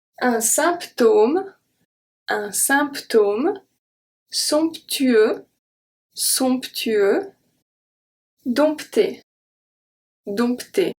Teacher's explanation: having a P and a T followed by each other, and then having to pronounce both, this is very unusual for French